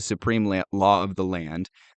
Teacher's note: He put particular stress on the second syllable of supreme